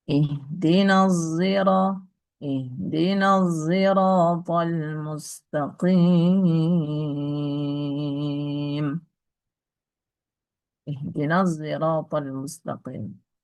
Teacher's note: Sehingga melahirkan huruf ya yang bukan dari keduanya, tapi mirip gitu. Maka sebutannya ismamus shadi zayan, mencampurkan antara shad dengan zai.